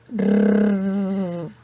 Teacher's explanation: Rrr. Profesora, cuando yo pronuncio la R, mi lengua empieza a moverse, a vibrar.